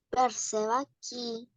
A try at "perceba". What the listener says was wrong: un poquito más suave la perceba, un poco más suave, diga, perceba